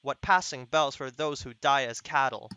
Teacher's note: So here you can identify there's no rhyming in these two lines specifically, but there's an organized metrical structure, iambic pentameter, da dum, da dum, da dum, da dum, da dum in the first line.